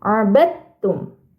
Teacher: huruf dalnya dimasukkan ke dalam huruf ta abadum Nah jadi tidak perlu dalnya itu dibaca abadtum A itu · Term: idgham mutajanisain